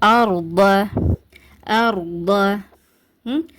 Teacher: அடுத்து என்ன ஜலில் அர் அர் சுக்குன் பெற்ற ராக்கு முன்னாடி பதஹா இருக்குது. அதனால இந்த சுக்குன் பெற்ற ராவ நீங்க வல்லினமா உச்சரிங்க. வல்லினமானா ஒன்னும் இல்ல நம்மளுடைய வாய் நிறைஞ்ச மாதிரி ஓதணும்.